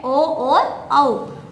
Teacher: तो ओ का तात्पर्य है ओ और औ, अर्थात कंठ ओष्ठ है, कंठ ओष्ठ से बोला जाएगा ओ और औ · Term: कंठोष्ठ